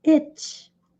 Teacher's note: I longo, T sutil, T fraco, I. Vejam que a gente faz toda a posição para fazer o T, mas na hora a gente não pronuncia de fato